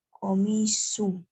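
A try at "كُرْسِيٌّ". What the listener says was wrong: Gak ada alnya, harus tanwin.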